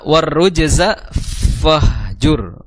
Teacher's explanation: Dan jangan sampai juga menghilangkan daripada sifat takrir, bergetarnya lidah. Ya, jadi huruf ra itu memiliki sifat takrir, yaitu bergetar lidahnya atau bergetar ujung lidahnya. Jangan sampai warruj jadi cadel akhirnya.